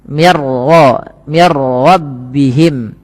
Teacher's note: ini tidak boleh ditahan bunyi mir karena dia bila gunnah tanpa disertai dengan gunnah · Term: idgham bila gunnah